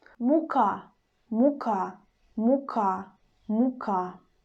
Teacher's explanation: u, which is before a, will be still pronounced like u very clearly, but a little bit shorter than a